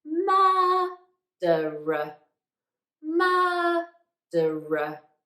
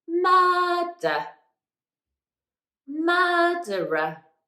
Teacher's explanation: I'm speaking in quite a high pitch for that first syllable. And that's because that's the stressed syllable and we really want to highlight it.